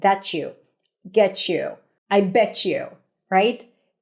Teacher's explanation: When the T and the ya connect, especially in colloquial American English, it often sounds like a ch sound as in chicken.